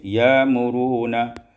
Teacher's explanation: ya'muruna ibdalul hamzati alifan, tukarkan hamzah alif